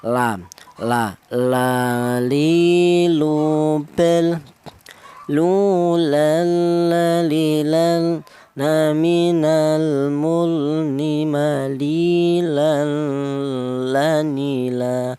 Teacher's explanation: Untuk huruf lam ini keluarnya huruf berasal dari ujung lidah menyentuh langit-langit mulut